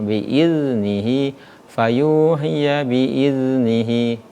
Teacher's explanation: sifat huruf za itu yaitu rakhawa ya. Ketika huruf za sukun maka berjalan